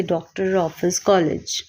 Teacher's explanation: इसका उच्चारण ओ तथा औ के मध्य की ध्वनि के रूप में होता है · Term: आगत